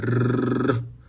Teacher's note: vibrando a ponta da língua